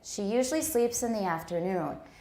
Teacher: where is the main stress? Yeah, on noon. I heard you say it was on afternoon.